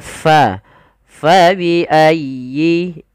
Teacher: dengan huruf Pa jangan pa biayi tapi Fa dialirkan nafasnya karena huruf Fa memiliki Salah satu sifat yaitu sifat hamus artinya mengalir Nya Nafas kita maka Fa faiayyi kemudian dilfal huruf ya ya bertasdid itu ada